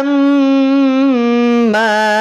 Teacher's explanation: idgham artinya memasukkan bunyi mim pada bunyi mim. Kita kenal dengan istilah idgham MM atau idgham mimi.